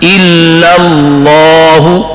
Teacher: پہلا لام شد کے ساتھ پڑھنا ہے مگر باریک, اور دوسرا لام شد کے ساتھ پر اور موٹا پڑھنا ہے